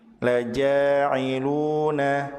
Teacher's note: ja dan juga lu dibaca panjang 2 harokat disebut sebagai mad tabi'i